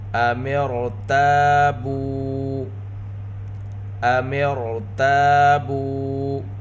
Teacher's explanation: تا میں الف مدہ، الف سے پہلے زبر، بو، با کے اوپر پیش، ساتھ واو ساکن واو مدہ، تا اور با دونوں کو دو حرکت کے برابر کھینچ کر پڑھیں گے۔